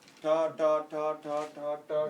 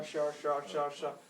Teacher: The only difference is your tongue falls a bit further down, so you can say sha.